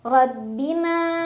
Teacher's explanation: ro dibaca secara tafkhim karena ro berbaris fathah jadi bacanya tebal tebal itu pangkal lidah kita terangkat